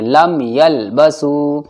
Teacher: میم ساکن کے بعد یا آ گیا تو کیا ہوگا؟ یہاں پر اظہار شفوی، لم کی آواز صاف پڑھنی ہے